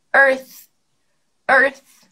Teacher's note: para fazer esse TH, a gente precisa colocar a língua entre os dentes e fazer som de S.